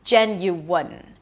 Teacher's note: The primary stress is on the first syllable, so it's higher in pitch and longer. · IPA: dʒɛn-yu-ən